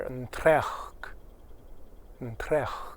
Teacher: The S sound goes away, and in the dialect I learned, it has a bit of an R sound.